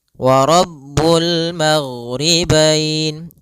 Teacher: Kemudian pada bacaan wa Rabbul maghribain, kembali kita mendapati ada alif lam qamariyah, yaitu alif lam yang tertulis dan dibaca dengan jelas suara lamnya